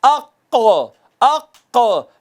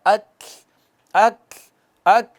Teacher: इसी तरह कौफ है पुर पढ़ा जाने वाला, अक अक, लेकिन अगर आप उसको पुर नहीं करेंगे, उसमें सिफत इस्तिला का इजहार नहीं करेंगे, वो बारीक वाला काफ बन जाएगा